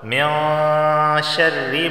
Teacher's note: من شر، یہاں نون ساکن کے بعد شین آیا ہے. جب بھی نون ساکن کے بعد شین آ جائے تو وہاں غنہ ہوتا ہے، اخفا والا غنہ، یعنی ناک سے پڑھتے ہیں